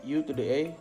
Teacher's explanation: So when you from U to the A, you are lowering your tongue for a more open vowel